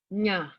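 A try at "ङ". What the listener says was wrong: Not nya. Nga. So nga, nya, na. So this is N, na. Na, na. And then this is nya, nya, nya, nya. Then there's nga, nga, nga, nga.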